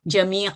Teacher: تو یہاں پہ ایک نون ساکن ہے، جمیع ان ہے لفظ، ہم نے اس کو وقف کیا تو یہ جمیع پڑھا جائے گا، جیسے کہ ہم جانتے ہیں کہ اگر فتح تین کی تنوین کو وقف کیا جائے تو پھر یہ الف جو ہے یہ 2 سیکنڈ کے لیے لمبا ہوتا ہے، جمیع کیونکہ یہ جو ہے حروف مدہ میں ہے۔